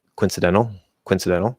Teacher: in faster speech you can sort of reduce that o to pretty much nothing and say like coincidental coincidental and it's gonna sound the same